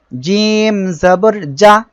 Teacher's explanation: জিম অক্ষরটি জিহ্বার মাঝখান তার বরাবর উপরে তালুর সঙ্গে লাগিয়ে উচ্চারিত হয়